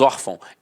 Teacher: Então a sílaba tônica está na penúltima e é acentuada.